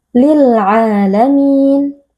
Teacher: tanwin yang bertemu dengan huruf lam hukumnya adalah Idam bila gunah tanwin kita masukkan atau kita leburkan ke dalam huruf lam lalu kita baca tanpa berdengung